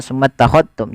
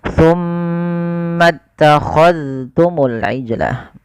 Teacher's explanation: Ini jangan summa takhadtum, jangan diidghamkan ke huruf ta, tapi zalnya ditampakkan dengan jelas